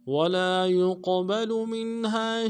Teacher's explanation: کھینچیں گے، ولا يقبل، یا کو قوف کے ساتھ ملانا ہے، قوف موٹا حرف ہے، موٹا کریں گے، قوف جب ساکن ہو تو قلقلہ ہوگا ، قلقلہ بھی کریں گے، با کو نرمی سے ادا کریں